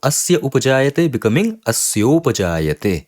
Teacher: So this is clearly the Guna Sandhi. A and U, they both are getting replaced by the Guna letter O.